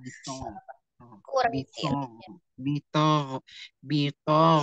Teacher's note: jadi mengangkat pangkal lidah untuk menebalkannya ya, bukan merubahnya menjadi huruf yang tipisnya jadi ta